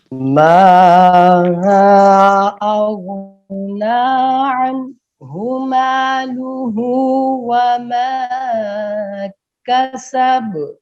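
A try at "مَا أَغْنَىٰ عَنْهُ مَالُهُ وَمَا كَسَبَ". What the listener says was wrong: اغ نہیں کرنا، غین میں قلقلہ نہیں ہوتا. غور کریں. اغنا یہ صحیح ہے، اغنا یہ غلط ہے. ما اغنا عنہ مالہ وما کسب.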